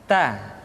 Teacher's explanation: Keluar dengan menyentuhkan ujung lidah kita dengan gusi-gusi gigi seri bagian atas. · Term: huruf Ta